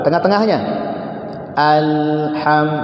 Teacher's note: tetap lamnya bunyi, mengalir sedikit dia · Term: tawassut